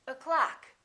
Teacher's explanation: The first syllable is reduced. The second syllable is stressed.